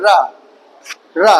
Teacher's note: लुंठित इसलिए बोल दिया गया जब रा बोलो आप रा तो हमारी जीभ क्या हुई टर्न हुई · ये लुंठित व्यंजन बोल दिया गया, जिसमें जीभ टर्न हो रही है। रा, रा पीछे को गई तो ये हमारा रा हो गया।